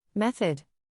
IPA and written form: ˈmeθ.əd (Method)